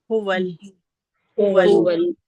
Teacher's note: हुवा का हमजा जो है वो सीने वाली जगह से है तो हम उसको आराम से निकालेंगे